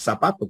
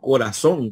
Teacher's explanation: nosotros decimos zapatos como si fuese con ese decimos corazón como si fuese con ese